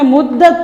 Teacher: یہاں پہ ہم نے مدت پڑھا تھا، تا کو ساکن کیا تھا، تا ایسے ہی ساکن رہے گا، لیکن ہم نے ایک چیز کا اس میں خیال کرنا ہے کہ تا پہ قلقلہ نہ ہو، نہ ہی تا کو موٹا کریں گے نہ ہی اس پہ قلقلہ ہو